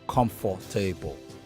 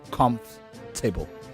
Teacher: Aim to make it a 3-syllabled word rather than 4.